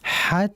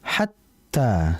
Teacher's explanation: jangan imtidad, jangan memanjangkan ha ketika mau masuk ke ta sehingga jangan dibaca hat. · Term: syiddah